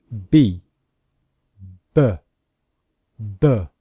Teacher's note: only comes from the sound of air leaving the mouth and in the voiced consonants example the letter b the sound also comes from the voice from the vocal cords in the throat